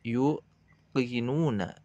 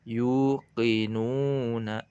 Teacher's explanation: Diberikan hak-haknya 2 harokat pada harfu ya dan harfu nun. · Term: mad tabi'i